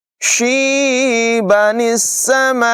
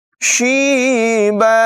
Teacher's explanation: نون کو سین کے ساتھ ملائیں گے، اسے نون قطنی کہتے ہیں